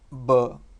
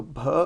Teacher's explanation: the aspiration is lost